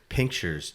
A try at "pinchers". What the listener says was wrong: Are you saying Are you saying pinchers? Pinchers? Pinchers? Like pinchers, like literal pinchers. But you're saying pinkchers.